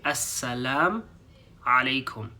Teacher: sometimes people don't pronounce the U at the end, and they just say Assalam Alaykum